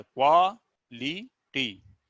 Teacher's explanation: यहाँ 3 स्वर का उच्चारण हो रहा है, क्वालिटी। एक बार आ का, एक बार ई का, एक बार बड़ी ई का।